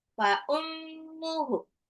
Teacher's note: Ummu, mim tasdid itu gunnah